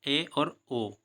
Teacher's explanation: अर्ध संवर्त स्वर अर्थ है मुख का थोड़ा अधिक खुलना।